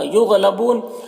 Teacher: غین حروف مستعلیہ میں سے پر پڑھیں گے